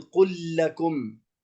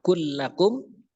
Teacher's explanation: bertemunya antara lam yang sakin bertemu dengan lam yang berharokat, maka dia diidghamkan dikarenakan tamatsul